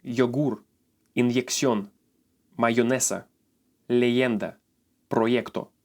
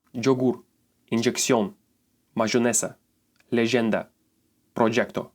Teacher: if you are in some parts of Mexico or Colombia, the letter Y will make the soft sound J.